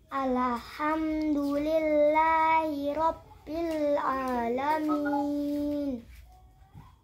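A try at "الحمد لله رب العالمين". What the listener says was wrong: Jangan kasih qalqalah lamnya, bukan alham. Alham, jangan kasih gerak lamnya, alham.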